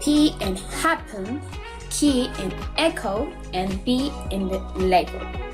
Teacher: We completely block the air and then release it quickly.